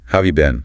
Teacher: Often that H sound just disappears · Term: connected speech